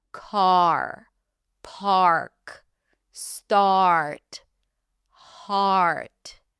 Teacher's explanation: keep the tongue down, and only when you hear the vowel fully pronounced, then you'll lift the tongue up for the R.